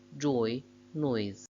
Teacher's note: The second element in each of them is I, a closer vowel. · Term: closing diphthongs